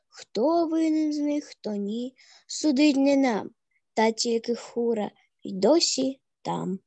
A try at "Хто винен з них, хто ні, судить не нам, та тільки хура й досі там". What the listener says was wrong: Умнічка, супер, взагалі супер.